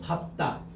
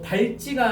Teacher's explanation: 알겠니? 자 그래서 자음 앞에서는 발이 아니고 밥으로 발음된다. 그래서 발다가 아니고 밥다.